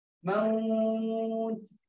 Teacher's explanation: Ta kalau ada pun dia ada sifat terkeluar angin tu. Sikit je.